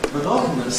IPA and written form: məˈnɒtn̩əs (monotonous)